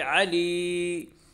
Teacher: یا ساکن سے پہلے زیر ہے یا مدہ، اس لیے یا مدہ کو ایک الف کے برابر کھینچ کر پڑھیں گے